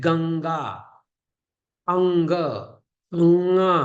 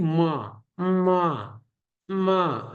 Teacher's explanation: इनका उच्चारण करते समय आपको नोज माने कि नाक, इसका यूज करना चाहिए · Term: अनुनासिक